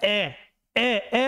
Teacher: अब ए क्यों आएगा, क्योंकि ये ए आएगा, ए ए ए बोलेंगे तो एक मध्य है, ए बोलने पर जो जीभ का जो होता है मध्य भाग सक्रिय रहता है, किसका, जीभ का मध्य भाग सक्रिय रहता है, उस स्थिति में ए आएगा।